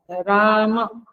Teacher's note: तो इस तरह से स्वर, मात्रा बलम, मात्रा राम और राम, जब माँ बोलते हैं तो डबल टाइम लगता है, 1 सेकंड म में लगती है, अ में लगती है, आ में 2 सेकंड लगती है, डबल टाइम पे बोलना चाहिए